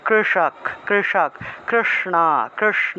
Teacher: জিউভা উল্টিয়ে স উচ্চারণ করলে যে উচ্চারণটা আসে সেটা হলো মূর্ধন্যস